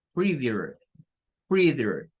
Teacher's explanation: normalmente los norteamericanos estas ts no las pronuncian sino que la hacen como una especie de r algunos la hacen como una dreadier creeder los británicos sí dirían